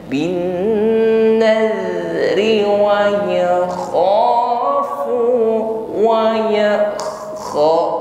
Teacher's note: huruf kha sifatnya isti'la, bunyinya tebal, ya, ada dengkur, ya, ada agak ngorok tapi lembut saja